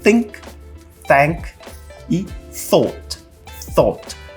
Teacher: aqui eu tô basicamente colocando a língua na ponta dos dentes dentes de cima e fazendo esse som que é quase como um sopro · um som de TH que eu tô quase que soprando não tô produzindo som de fato mas eu tô aqui soprando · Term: TH surdo